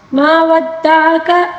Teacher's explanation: عین کو باریک پڑھیں گے، کاف کو بھی باریک پڑھیں گے